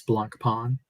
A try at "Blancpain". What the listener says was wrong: the N at the end is silent it's a silent n